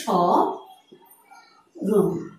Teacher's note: আমরা এখানে মফলা ব্যবহার করেছি, দুটো শব্দেই মফলার ব্যবহার হয়েছে, কিন্তু মফলার উচ্চারণটি হয়নি।